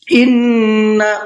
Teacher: نون کے اوپر تشدید ہے تو یہاں پر غنہ کریں گے